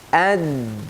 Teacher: Waktu baca dal harus dibaca dal bertasydid. Ad-din. Dan huruf dal sifatnya syiddah dan jahar.